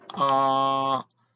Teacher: The first tone is high and level.